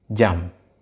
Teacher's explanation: Kita lihat pada bunyi onset ada konsonan J, kemudian bunyi peak atau pada struktur peak ada bunyi vokal A, dan pada coda ada konsonan nasal bilabial M